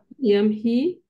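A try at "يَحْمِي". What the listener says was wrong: Hama yahmi, bukan yamhi. Hurufnya tertukar tempat.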